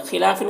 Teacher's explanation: ख़ौ को पुर पढ़ेंगे, हुरूफ़ मुस्तालिया में से है। लाम में अलिफ मद्दा है, एक अलिफ के बराबर खींचेंगे।